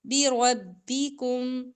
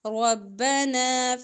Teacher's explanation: را پر زبر ہے تو را موٹا پڑا جائے گا